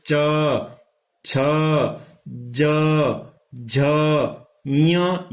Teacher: दांत से जो थोड़ा सा पीछे वाला हिस्सा है ऊपर की साइड में, उसको बोलते हैं तालु। उस तालु से ये अक्षर बोले जा रहे हैं।